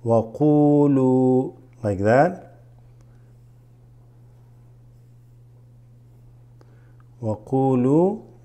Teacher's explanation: Waqulu. The waw here makes the qu a little bit longer.